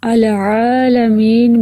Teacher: آگے لفظ العالمین میں عین کے تلفظ کو حلق کے درمیان سے ادا کیجئے